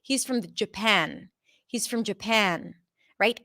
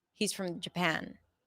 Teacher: I'm also raising the pitch for the word that is stressed out the most, in this case, Japan.